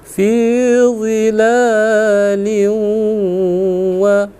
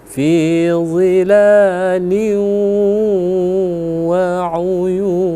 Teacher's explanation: Jadi kalau idgham bi gunnah, huruf waw itu dia khayshum, masuk ke hidung, ya.